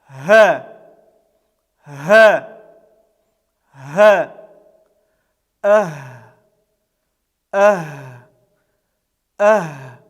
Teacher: Этот звук является щелевым, глухим, без участия голосовых связок голоса произносится. И этот звук является мягким.